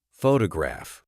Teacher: in the word photograph, the stress is on the first syllable, photograph.